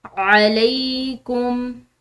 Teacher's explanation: ऐन हल्के हरूफ में से यानी कि हल्क से अदा होने वाला हरूफ है